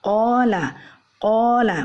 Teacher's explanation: Jadi di sini dapat kita perhatikan bahwa dua sisi yang bertemu di sini adalah pangkal lisan bertemu dengan langit-langit lunak. Jadi pangkal lidah kita menyentuh daging lunak yang ada di langit-langit belakang. Dari sinilah keluarnya huruf qaf Ini dapat kita rasakan ketika kita mengucapkan huruf qaf tersebut. · pangkal lidah ibu-ibu naik ke atas ya, menyentuh daging lunak yang berada di langit-langit ya, langit-langit paling belakang